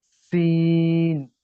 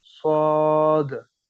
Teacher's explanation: स्वाद में भी सीटी की आवाज होती है, लेकिन स्वाद मोटा होता है, ठीक है, और होंठ थोड़े गोल होते हैं, जी सीन में होंठ लंबे होते हैं, स्वाद में होंठ गोल होते हैं। और जी जुबान, मुंह में हवा भरती है स्वाद पढ़ते हुए, ठीक है।